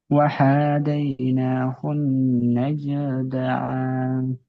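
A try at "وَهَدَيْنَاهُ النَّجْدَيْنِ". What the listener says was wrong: এই যে দা ইন বলে টান দিলেন, দা ইন কেন টান দিলেন? ইয়া মাদ্দা তাই নয়? হ্যাঁ, ওটা ইয়া মাদ্দা। ইয়া মাদ্দা কাকে বলে? ওখানে ইয়া সাকিনের ডান দিকে জের এসছে, দেখেন তো। তাহলে কি এসছে? চলেন বানান করেন, নাজ দাইন বানান করেন।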